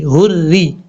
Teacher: रा के नीचे खड़ी ज़ेर है, रा के नीचे ज़ेर है, रा को बारीक पढ़ेंगे क्योंकि जब रा के नीचे ज़ेर हो तो रा बारीक पढ़ा जाता है